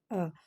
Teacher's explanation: حمزہ زبر کو منہ کھول کے ادا کریں گے اور حمزہ کو نہیں کھینچتے